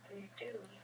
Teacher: my mouth is more relaxed in syllable one. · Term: schwa